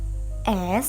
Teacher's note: sedangkan fricative merupakan bunyi yang memberikan geseran sehingga dapat dikatakan bahwa bunyi es merupakan bunyi yang melibatkan daerah alveolar